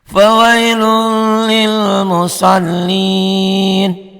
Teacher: Ini kan un dibaca satu karena ketemu tasdid gitu ya. Fawailun, lunnya jadi lul, masuk ke lam ini.